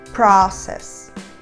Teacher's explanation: um som de vogal entre a letra a e o o aberto